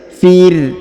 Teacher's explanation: huruf ro sukun maka kita baca tipis